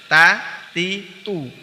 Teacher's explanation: huruf ta keluar dari ujung lidah dari arah punggungnya dan menempel pada gusi dua gigi seri atas